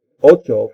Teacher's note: the CT sound in Spanish changed into a CH sound in everyday speech.